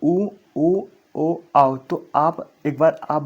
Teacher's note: जिनके उच्चारण में ओठ की आकृति वृत्ताकार यानी गोल जब हो जाती है उन्हें वृत्ताकार या वृत्त मुखी कहते हैं।